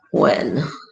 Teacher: because when pronounced correctly, the H in when, where, why, etc. is sounded